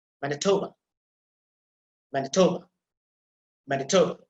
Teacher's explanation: the last short vowel, that is almost inaudible because that is unstressed sound